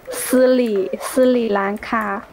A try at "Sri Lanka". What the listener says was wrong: Not Sri. Sri Lanka with R. Say R? Sri Lanka. Even in typing, you cannot say R. You can type R.